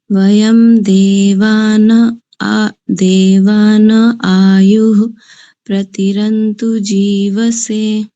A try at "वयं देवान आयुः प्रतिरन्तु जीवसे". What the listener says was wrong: पहली पंक्ति में आपने अच्छा उच्चारण किया और दूसरी पंक्ति के प्रथम शब्द को पहले ठीक बोला, फिर बाद में उसका मकार उच्चारण किया।